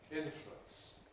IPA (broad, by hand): ˈɪn.flwəns